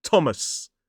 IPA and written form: ˈtɒməs (Thomas)